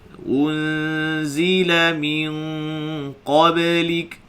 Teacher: Sini nun sakinah bertemu dengan qaf, ikhfa hakiki. Dengung tu jadi tebal. Dan sini kita dapat tengok dari sudut timbangan ya, antara bunyi huruf dengan bunyi dengung tadi, bunyi huruf lagi kuat daripada bunyi dengung.